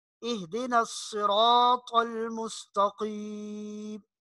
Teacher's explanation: آگے دیکھیے اگلی آیت ہے اہدنا الصراط المستقیم۔ اب صاد کو تھوڑا سا موٹا پڑھنا ہے، سین کی آواز نہیں آنی چاہیے۔ سین اور صاد کے مخرج میں فرق ہے، وہ آگے جب آپ کو مخارج پڑھائے جائیں گے تو اس میں آپ سمجھ لیں گے۔